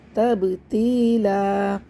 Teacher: سے لوگ تبتیلا پڑھ دیتے ہیں، یہاں پہ قلقلہ نہیں کرتے، یہاں پہ با ساکن پہ قلقلہ ہوگا